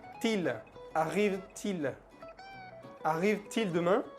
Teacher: Se hace una liaison. Se pronuncia la última T.